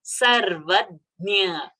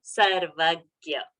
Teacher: It is a ja and a nya sound, which is coming from the varga talavya.